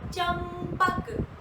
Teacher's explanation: नंदन, जीभ ऊपर दांतों में लगती है। और चंपक, दोनों ओठ आपस में टकराकर वायु को रोक देते हैं, आपकी सांस को रोक देते हैं और उस वक्त सांस नाक से निकलती है। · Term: अनुस्वार